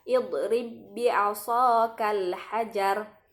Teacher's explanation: dalam kata idrib bi asakal hajar tidak perlu menampakkan qalqalah pada huruf ba-nya